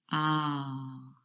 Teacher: that sound is really produced right at the back of your mouth ah and your mouth is wide open and the tongue is